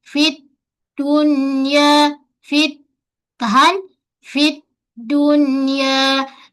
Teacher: Daldu ada apa? Ada sifat a kita sebut syiddah. Tertahan dari segi aliran suara.